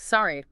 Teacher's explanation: The voice has to start medium, dip a little, and then rise sharply at the end. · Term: down-up pattern